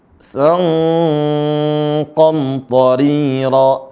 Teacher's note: boleh baca ang ya, sang, tapi angnya tebal dikit. Sang qamtarira, karena sudah mengarah huruf qaf.